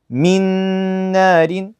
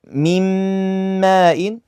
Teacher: merging the two letters into one mushaddad letter that's the same as the second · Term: Idgham